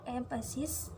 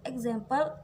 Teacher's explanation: in the word emphasis, the stress falls on the first syllable, while in the word example, it falls on the second syllable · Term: word stress